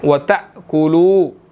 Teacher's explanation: حمزہ ساکن ہے، یہاں پر ہم نے چھٹکا دینا ہے سلائٹ سا، ٹھیک ہے، وَتَأْكُلُو، اور اسی طرح اس کو کلو پڑھیں گے، واو مدہ ہے، 1 سیکنڈ لمبا کریں گے۔